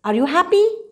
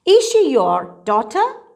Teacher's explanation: the top this is called the rising tone in your voice always confirmation questions go up they are in a rising tone